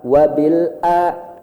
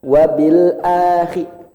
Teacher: Kemudian a-nya cukup 2 harekat. Wabil a, naik sedikit langsung turun.